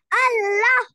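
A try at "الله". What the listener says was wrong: Allah. Allah. We have to make it pur. It means we have to make it different than not as a thin. It has to be little fat. Your sound has to be like Allah. Allah. So this is how we pronounce the Shaddah.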